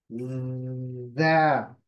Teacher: जबान नीचे की तरफ, नीचे के दांतों के पिछले हिस्से को लगाएंगे मसोड़े में। जा, वाइब्रेशन है यहाँ पर।